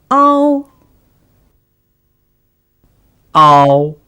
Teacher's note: When you pronounce the compound final, ow, for example, the level of your tongue should move from that of a to that of o without giving pauses in the middle. The ah sound should be pronounced long and loudly, whereas the sound o is pronounced shortly and softly.